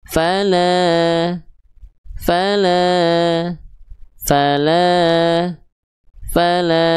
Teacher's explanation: Fala, la, ayunnya dua kali. Yang fa satu kali ayun karena dia fathahnya nggak ketemu sama alif. Yang la ini dua kali ayun karena fathahnya ketemu sama alif.